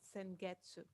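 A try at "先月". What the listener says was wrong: Sengetsu, good.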